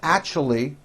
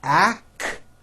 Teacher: Actually. It's not actually with a CH, it's actually with an SH sound.